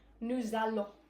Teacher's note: we've got a consonant and a vowel, so we link them with, you guessed it, the Z sound